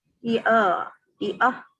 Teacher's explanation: Hamzah tak boleh bunyi ain. Hamzah mesti bunyi A.